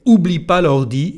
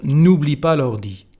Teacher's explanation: You know that we don't pronounce when you speak the first part, the ne part of the negative form. So here you can just say oublie pas l'ordi instead of n'oublie pas l'ordi.